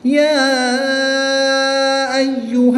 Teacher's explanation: کھڑی حرکات کے بعد حمزہ دوسرے کلمے میں ہے تو اس لیے یہاں پر مد منفصل ہوگی، 2 سے 3 الف تک کھینچ کر پڑھیں گے